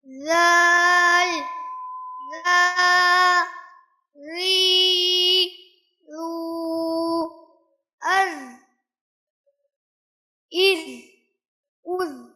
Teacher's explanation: زبان کی نوک کو سامنے والے دو بڑے دانتوں کے کنارے پر لگانا ہے. عامتاً یہاں پر بھی یہی غلطی ہوتی ہے کہ زبان باہر کی طرف آ جاتی ہے اور ہونٹ چوڑا کر کے ادا کرتے ہیں.